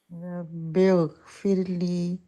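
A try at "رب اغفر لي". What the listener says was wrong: ٹھیک ہے غائن کو بہت ٹائم دینا چاہیے. یہ مس ہو جاتا ہے.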